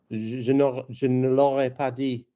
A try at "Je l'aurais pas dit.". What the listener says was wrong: Try for me not saying the "n", just saying the "pa", and I bet you'll find it easy to say. Je l'aurais pas dit. Don't do the "n".